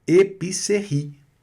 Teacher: Vogal E não é pronunciada no final da palavra, ela fica meio que muda, fantasma ali.